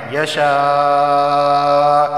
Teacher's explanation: کیف یشاء، یہاں پہ مد متصل ہوگا، مد متصل کیونکہ ایک ہی لفظ کے اندر مدہ اور حمزہ دونوں جمع ہو گئے ہیں، مد متصل ہوگا، یعنی لازمی 4 الف کے برابر اسے کھینچ کر پڑھنا ہے